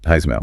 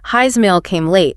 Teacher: A word ends in s like his and the next word starts with a vowel like his email. That s sound often gets voiced. It vibrates so it sounds more like a Z. So his email sounds like Heismail pretty much. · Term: linking with a Z sound